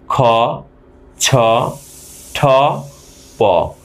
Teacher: তার মানে এখানে প থেকে অল্প বাতাস নির্গত হচ্ছে। সুতরাং প হচ্ছে অল্পপ্রাণ ধ্বনি।